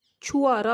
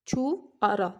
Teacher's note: ਹਾਂਜੀ, ਜਿਵੇਂ ਸ਼ਬਦ ਹੈਗਾ ਛੁਹਾਰਾ, ਤਾਂ ਤੁਸੀਂ ਦੇਖ ਸਕਦੇ ਹੋ ਇਹਦੇ ਵਿੱਚ ਹਾਹਾ ਜਿਹੜੀ ਧੁਨੀ ਹੈ, ਇਸ ਹਾਹਾ ਧੁਨੀ ਨੂੰ ਨਾ ਉਚਾਰ ਕੇ ਮਾਝੀ ਉਪਭਾਸ਼ਾ ਬੋਲਣ ਵਾਲੇ ਇਸ ਨੂੰ ਛੁਆਰਾ ਬੋਲਦੇ ਹਨ। ਛੁਆਰਾ, ਤਾਂ ਹਾਹਾ ਦੀ ਜਗ੍ਹਾ 'ਤੇ ਅ ਜਿਹੜੀ ਹੈਗੀ ਹੈ ਅ ਧੁਨੀ ਦਾ ਉਚਾਰਨ ਕੀਤਾ ਜਾਂਦਾ ਹੈ